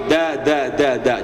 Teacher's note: Lidahnya nempel ke gigi, ya Pak ya, ke gigi seri.